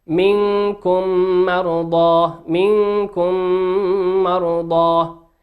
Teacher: الميم هذه درس اليوم ميم ساكنة، أتى بعدها حرف الميم في كلمة مرضى وهي ميم متحركة، والميم حرف إدغام